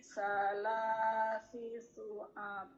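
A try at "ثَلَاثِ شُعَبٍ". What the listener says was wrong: Salasi syu'ab. Bukan sa, ujung lidah bertemu dengan ujung gigi atas. Sa. Salasi syu'ab.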